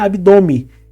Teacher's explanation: ar pelo nariz e esse som acaba Ganhando esse caráter nasalado muitas vezes a gente não pronuncia esse n a gente só pronuncia abdome